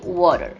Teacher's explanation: the stress in this case is on the first syllable